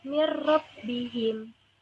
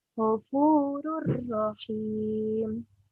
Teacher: Mirrobbihim itu enggak ada dengungnya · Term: idgham bila guna